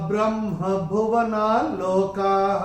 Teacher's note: चरण की समाप्ति पे जो विसर्ग आ रहा है, चरण की समाप्ति पे आ रहा है, उसका उच्चारण केवल और केवल ह ही होगा